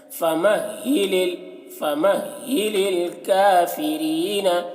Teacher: فَمَهِّلِ، دیکھیے یہ ہا کی آواز بھاری ہوتی ہے